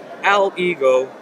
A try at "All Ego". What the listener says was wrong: Because you're saying Al Ego.